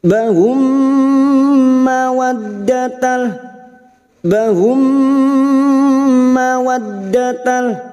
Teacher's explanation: Bertemunya mim sukun dengan mim. Memasukkan bunyi mim sukun kepada mim berikutnya disertai mendengung selama 3 harokat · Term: Idgham mimi